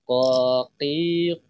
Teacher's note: lidah yang nempel ke langit-langit belakang seperti itu ingatahmi gitu berarti pangkal lidah itu nempel ke eh langit-langit belakang · berarti pangkal lidah itu nempel ke langit-langit belakang seperti itu